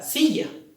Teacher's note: en este caso la sílaba que tiene la mayor fuerza de voz se encuentra en si